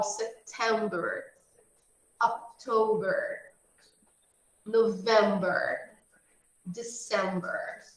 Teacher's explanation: a gente vai ver que a sílaba tônica são as sílabas do meio. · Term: sílaba do meio